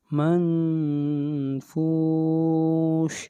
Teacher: نون کے اوپر اخفا ہوگا، آواز ناک میں جائے گی۔